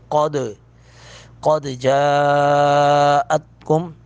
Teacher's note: جا پر مد متصل ہے، تین الف کے برابر اس کو کھینچیں گے